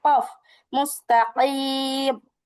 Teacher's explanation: জিহ্বার গোড়াটা ঠিক তার বরাবর উপরের তালুর সঙ্গে লাগিয়ে কফ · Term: কফের মাখরাজ